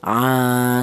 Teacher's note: huruf ain ini dipanjangkan satu alif atau dua harakat atau dua ketukan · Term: mad thabi'i